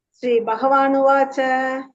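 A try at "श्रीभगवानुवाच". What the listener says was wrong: பஹவே வரக்கூடாது. ஸ்ரீ பகவானுவாச்ச. நிறைய பேர் சொல்றேன் பக பகன்னு, ஹ இல்லாது பக பக.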